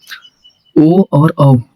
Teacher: ओ और औ आपका कंठ और ओष्ठ है।